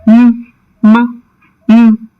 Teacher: The two lips come together and the oral passage is closed completely. So air escapes only through the nose.